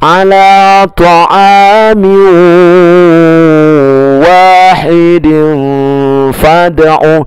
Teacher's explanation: Maka tanwin bertemu waw dibaca dengung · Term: idgham bigunna